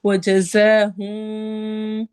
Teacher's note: زی والا زا سٹی کی آواز کے ساتھ پڑھا جاتا ہے